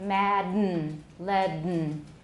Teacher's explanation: We took the vowel out, no vowel at all. And instead of releasing it orally, we pushed the air back and it came out through the nose. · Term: nasal release